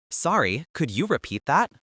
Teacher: Remember to emphasize the word sorry and maintain a neutral questioning tone. We're asking for help, not issuing an order.